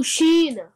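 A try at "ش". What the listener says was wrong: Okay, not n at the end, remember? Sheen.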